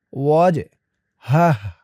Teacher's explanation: এই জিমটাও কলকলার হরফ ধাক্কা দিয়ে পড়তে হবে